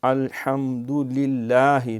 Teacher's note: لام جو اللہ کی ہے یہ باریک ہوگی، کیونکہ لفظ اللہ کے لام سے پہلے جب زیر آئے تو باریک، زبر اور پیش آئے تو موٹا۔